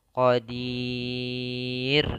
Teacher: Kemudian ro-nya karena dia di akhir, sebelumnya ada huruf kasroh, maka ro-nya tipis. Jangan dibaca qadir, tapi dibaca dengan ro yang tipis.